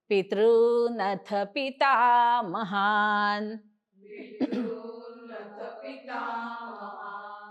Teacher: ऋकार म्हणताना पितृ जीभ वरती उचलायचे, कुठेच टेकवायचे नाही आणि मागे ओढायचे. पितृ आणि तो दीर्घ आहे परत.